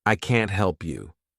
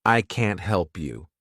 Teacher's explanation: because I'm emphasizing can't that really means I can't help you I cannot help you